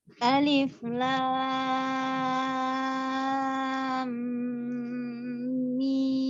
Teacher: Nah, alif dia tidak memiliki mat. Huruf lam dan mim dibaca 6 harokat